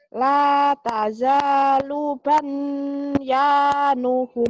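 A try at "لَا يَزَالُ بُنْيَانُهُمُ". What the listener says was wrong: Bukan ta. Ya. Bukan ta ibu, titiknya di mana ya?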